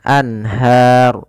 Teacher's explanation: Tapi kalau ru ini kan asalnya al-anharu. Ha karena kita waqaf runya dimatikan menjadi ro yang disukunkan anhar. Kemudian sebelum huruf yang dimatikan di akhir ada huruf mad. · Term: sukun arid, mad arid disukun